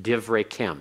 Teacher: it's a silent schwa. It closes the first syllable, makes it a short hirik.